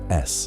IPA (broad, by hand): s